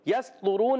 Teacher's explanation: सीन को सीटी के साथ अदा करेंगे बारी बारीक हुरूफ में से सीटी वाले हुरूफ में से है